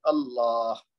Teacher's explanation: ایک دو لام کو تھوڑا سا لمبا کریں گے اور دوسرا آخر میں ہا کی آواز نکال کے چھوڑیں گے، اس کو ساکن کر دیں گے